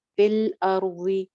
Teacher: فل الارض را موٹی ہے کیونکہ ساکن ہے